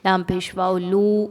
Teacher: واو مدہ ہے، 2 حرکات کے برابر لمبا کر کے پڑھیں گے